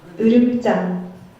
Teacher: The first one has an unrounded vowel, and the second one has a rounded vowel in the same place.